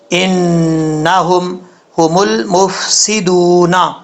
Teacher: نون مشدد ہے، 1 الف کی مقدار غنہ کر کے پڑھیں گے